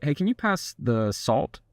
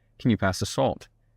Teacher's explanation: my tone there at the the end went down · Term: lower note